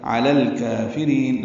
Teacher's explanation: لام پر کھڑا زبر تھا، ملانے کی وجہ سے زبر آئی، علی الکافرین، لام ساکن پہ اظہار قمری ہے، کاف کی وجہ سے کاف حروف قمری میں سے ہے۔